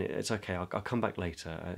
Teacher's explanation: I'm in that kind of low mid part of my voice not terribly expressive and I'm hurried